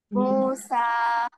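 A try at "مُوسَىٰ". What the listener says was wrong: মুসা। মুটা আর একটু লম্বা করতে হবে হালকা, হ্যাঁ। প্রাথমিক অবস্থায় একটু লম্বা করে বলতে হবে, হ্যাঁ। তবে সুন্দর হয়েছে মাশাল্লাহ, 90%।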